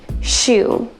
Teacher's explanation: the lips go forward and the tongue goes back